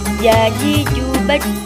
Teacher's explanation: Selanjutnya yaitu huruf jim. Huruf ini dilafalkan dengan menyentuhkan tengah lidah ke daerah langit-langit